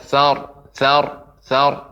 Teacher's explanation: ra yang sukun di ujung, dia dibaca tebal